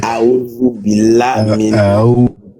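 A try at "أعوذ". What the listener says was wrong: Aoudou billah. Aoudou. Aoudou. Pas D, pas Z. Entre les deux. Tu mets la langue contre les dents. Du haut. Aoudou. Aoudou.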